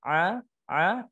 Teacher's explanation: huruf ain berada di tenggorokan bagian tengah, a. Sifat dari huruf ain ini tidak dia syiddah, tidak dia kuat, dan dia tidak juga rakhawah, lemah, tapi dia tawassut atau bainiyah, di antara sifat yang kuat dan lemah.